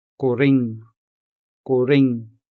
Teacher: For this word, the stress is on the second syllable.